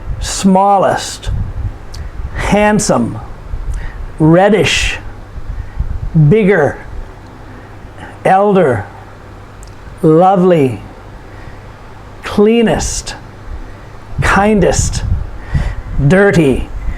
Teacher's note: these are all two-syllable adjectives and the emphasis is put upon the first syllable